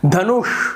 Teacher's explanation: उसी प्रकार से देखिए धनुष, तो धनुष नहीं बोलेंगे, धनुष नहीं बोलेंगे, धनुष नहीं बोलेंगे, आप भारीपना श में धनुष, तो ये जो श है जो आपके पीछे वाले भाग से आ रहा है जीभ के और थोड़ा भारीपना है, धनुष, तो ये जो श है इसका सही उच्चारण होता है। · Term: मूर्धन्य